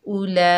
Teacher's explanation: इस मद को 5 अलिफ की मिक़दार खींच कर पढ़ेंगे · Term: मद्दे मुत्तसिल वाजिब